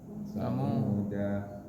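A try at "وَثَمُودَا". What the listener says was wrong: Enggak, dibaca apa tadi Samuda? Bila wasol, da-nya dibaca pendek. Bila waqaf, Dibaca sukun.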